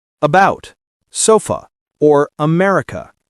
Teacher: the schwa sound uh that relaxed neutral vowel you hear in words like about, sofa, or America. Americans use the schwa a lot in unstressed syllables.